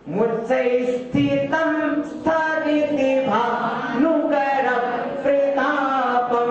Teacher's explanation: थी के बाद डायरेक्ट ता बोलते हैं, ता में सा जोड़ देते हैं